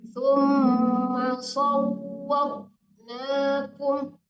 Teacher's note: Ditahan dulu, Bu. Wawnya itu kan tasdid ya, ditahan dulu.